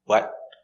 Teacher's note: Now this is the t, but we're not making the t, not what. We're going to do the stop T, what. And you can stop the air with your tongue up, what. Or you can stop the air here in your throat, what.